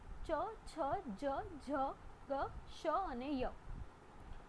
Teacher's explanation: તાળવામાંથી કયા વ્યંજન બોલાય છે તો એને તાલવ્ય વ્યંજન કહેવાય છે